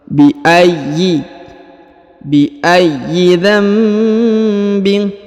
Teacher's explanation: huruf ya ditahan dan ditekan ya karena terdapat tanda tasdid